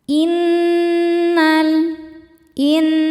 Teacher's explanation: Nunnya dihukumi gunnah musyaddadah karena nun bertasydid. Cara bacanya berdengung